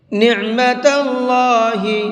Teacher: اللہ کے لام کو منہ بھر کے پڑھیں گے، اس لیے کہ اللہ کے لام سے پہلے زبر ہے، اور اللہ کے لام سے پہلے زبر ہوتا ہے تو اس اللہ کے لام کو منہ بھر کے پڑھتے ہیں۔